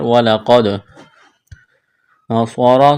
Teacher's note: صاد کو موٹا کرنا ہے، سیٹی کی آواز پیدا کرنی ہے